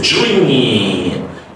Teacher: DR is a J sound, and you stretch the E vowel longer, E vowel sound, and say dream.